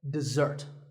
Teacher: this is dessert notice that the first syllable is dip and the second starts with a Z sound we stress the second syllable